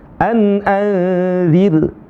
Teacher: Karena ra sukunnya sebelumnya adalah kasrah, maka dibaca dengan tarqiq namanya.